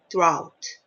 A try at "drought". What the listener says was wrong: Okay, drought. All right.